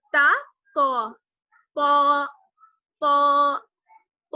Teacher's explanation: تا اور ط ان دونوں میں فرق یہ ہے کہ تا باریک پڑھی جاتی ہے, ط موٹا پڑھا جاتا ہے, جبکہ دونوں کا مخرج رہے گا, یعنی زبان کی نوک اور ثنایا الیاء کی جڑ, ثنایا الیاء کی جڑ.